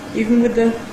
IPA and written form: ˈiːvn wɪð ðə (even with the)